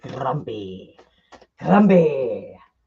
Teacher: I'm going to do a rolled R every time I say Grumpy